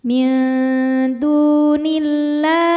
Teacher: Lam jalalah dibunyikan secara tarqiq sebab harokat huruf sebelumnya kasrah, maka lamnya ini tipis bunyinya lah.